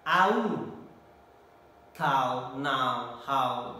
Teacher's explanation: From A, it is relatively open to close position, U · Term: closing diphthong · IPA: /aʊ/